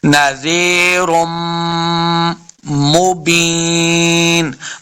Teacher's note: کو، نذیرم، پھر آگے را کو میم کے ساتھ لانا ہے، میم مشدد ہے تو غنہ کے ساتھ پڑھیں گے